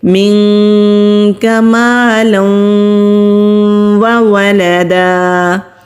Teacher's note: منک مالا وولدا، خالی الف سے پہلے زبر ہے، الف مدہ ہے، لام کے اوپر تنوین ہے، تنوین کے بعد جب واو آتا ہے تو وہاں پر ادغام ہوتا ہے غنہ کے ساتھ۔ ادغام کہتے ہیں ملا کر پڑھنے کو، اور غنہ کہتے ہیں 2 سیکنڈ کے لیے نون کی آواز کو ناک میں چھپا کر رکھنے کو۔